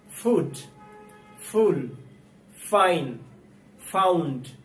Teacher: F F আমরা অনেক সময় দুই ঠোঁট মিলিয়ে উচ্চারণ করি, যেটা সম্পূর্ণ ভুল। এফ উচ্চারণ করার সময় উপরের দাঁত আমরা নিচের ঠোঁটের সাথে মিলিয়ে তারপরে উচ্চারণ করব এফ। এফ দিয়ে সাধারণত ফ সাউন্ড হয়।